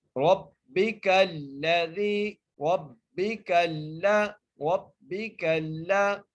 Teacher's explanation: را کو با سے ملائیں گے اور سختی سے ملائیں گے، را کو موٹا کر کے پڑھیں گے، با کے نیچے زیر ہے، کاف کو لام سے ملائیں گے۔